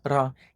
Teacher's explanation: In a Puerto Rican accent, they still use the regular tapped R, ra, in between vowels.